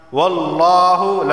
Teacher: لفظ اللہ سے پہلے زبر آیا ہے تو لفظ اللہ کو موٹا پڑھا جائے گا